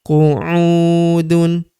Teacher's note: Huruf U kita panjangkan dua harakat karena terdapat wau sukun di depannya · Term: panjangkan 2 harokat